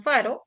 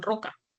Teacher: La letra R, que a veces puede ser una vibrante simple, como en faro, o puede ser una vibrante múltiple, como en roca